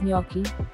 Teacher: g is silent here there is an invisible y here in the stress is on no